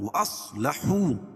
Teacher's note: صاد کو پر پڑھیں گے، کیوں؟ صاد حروف مستعلیہ میں سے ہے، حروف مستعلیہ 7 ہیں، خا، صاد، ضاد، غین، طا، قاف اور ظا۔